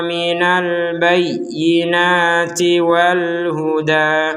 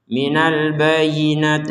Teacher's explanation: Ada ya bertasydid kita baca dengan tekanannya. Jadi jangan sekedar bayina itu kan nggak ada, itu nggak ada tekanannya.